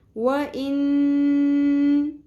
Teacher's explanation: Next آیت واو زبر و، حمزہ زیر نون. ان، نون مشدد ہے، نون کی آواز ناک میں ٹھہرائیں گے، غنہ کریں گے